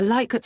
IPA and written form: ˈlɪkərt (Likert)